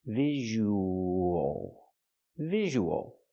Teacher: We have the long ooh sound plus the. So we have the ww sound in the middle linking to vowels.